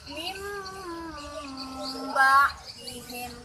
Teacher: membacanya ialah dengan membalikkan bunyi nun mati atau tanwin kepada bunyi huruf mim. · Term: iklab